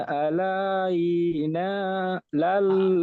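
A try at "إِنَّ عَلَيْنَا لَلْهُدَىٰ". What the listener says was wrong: আলাই বলে টান দিচ্ছেন, ইয়ামাদ ইয়ালিন টান হয় না, লাম ইয়াজবুল্লাই।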